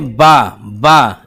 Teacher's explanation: फा बोलते हैं, किसका प्रयोग हो रहा है, ओठ का प्रयोग हो रहा है, केवल ओठ का ज्यादा प्रयोग हो रहा है, इसलिए फा जो है वो ओष्ठ व्यंजन हो गया, ओष्ठ। माँ जब बोलेंगे माँ, दोनों ओठ जो है चिपक जाते हैं, ये भी ओष्ठ व्यंजन हो गया, ओष्ठ व्यंजन।